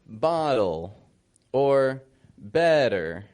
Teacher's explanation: a flap T is appropriate when it comes before an L · When you have a T that's unstressed, similar to the glottal T, also unstressed, but an unstressed T between two vowel sounds, it's going to be a flap T, usually. So, for example, if we look at the word that you said, bottle, or better, those are both getting flap T's because the T is coming between two vowel sounds.